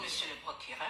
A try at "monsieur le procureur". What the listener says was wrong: Voilà quelqu'un qui dit avoir fait terminal B, qui dit monsieur le procureur. On ne dit pas monsieur le procureur. Parce que le R, ça se prononce. Ça n'a pas été fait pour qu'on attache ça comme de la façon on attache un bœuf. On dit monsieur le procureur.